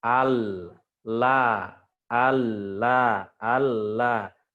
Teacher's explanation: ujung tepi lidah ya ketemu di pangkal gusi ada huruf lam al-layla ala-ala karena dia di ujung tepi dia